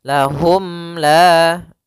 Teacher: Maka untuk panjang izhar untuk cara membacanya, yaitu suara mimnya tidak boleh ditahan, tidak boleh lahum la, tapi akan tetapi dia harus jelas dan langsung saja. Lahum la sambil menyempurnakan daripada huruf mimnya. Bibir kita dirapatkan. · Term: izhar syafawi